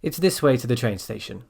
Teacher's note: we go down when we make that kind of statement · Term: intonation